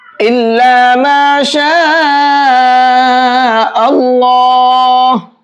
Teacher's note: یہاں پر بھی یہ مد متصل ہے، اس کو بھی 4 سے 5 الف کے برابر کھینچیں گے، اور اللہ، اسلام کو موٹا کر کے پڑھیں گے، پر کر کے پڑھیں گے۔